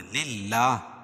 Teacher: اللہ کا لام باریک پڑھا جائے گا، کیوں؟ اللہ کے لام سے پہلے والی لام پر زیر ہے۔